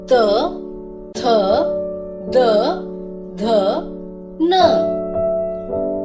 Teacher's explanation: इन वर्णों के उच्चारण में ध्वनि जीभ के आगे के हिस्से से दांतों को छूने से आती है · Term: दंत्य ध्वनियां